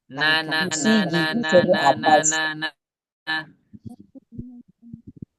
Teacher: Langit-langit atas. Langit-langit yang dekat dengan gusi gigi seri atas. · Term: nun